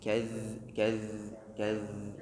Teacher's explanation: Kemudian kazzabat, kazza ada huruf zal. Ini zal keluar dari bagian ujung gigi sari atas, ini gigi sari kita, bagian ujungnya bertemu dengan ujung lidah. Jadi dia harus bergetar di situ.